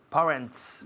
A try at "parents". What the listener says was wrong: no parents, sino parents. Un sonido vocal muy largo, parents.